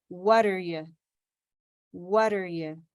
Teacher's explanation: So the T of what becomes a kind of a D sound to connect.